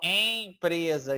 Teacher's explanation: Então, esse em passou aqui pelo nariz, correto? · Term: vogal nasal